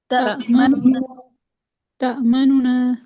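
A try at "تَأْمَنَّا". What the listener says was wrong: تأمنونا. غنہ نہیں کریں گے، اظہار کر کے پڑھیں گے. ٹھیک ہے، تأمنونا.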